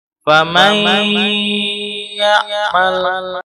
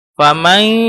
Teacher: Jadi tidak hanya sekedar memasukkan huruf nun ke ya, tapi juga harus ada al-khaisumnya. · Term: idgham bigunah